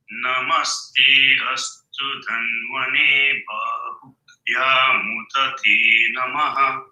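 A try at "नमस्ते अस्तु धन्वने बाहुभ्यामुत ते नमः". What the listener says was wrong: 2 mistakes. Astu anudata. Dhanvane. Va is Swarita, not ne.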